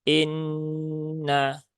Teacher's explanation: di Nun bertasdid nah ini dibaca dengan ghunah dia ditahan tiga rakaat jangan terburu-buru innaah tunaikan dulu tiga harakat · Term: gunnah